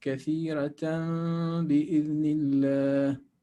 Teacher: So we change the noon of tanween into a meme. Instead of saying kathiratan, we say kathiratan bi'idhnillah. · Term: Iqlab